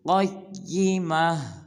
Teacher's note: قاف کو پر ادا کریں گے، قاف کے بعد یا مشدد ہے تو قاف کو یا مشدد کے ساتھ ملائیں گے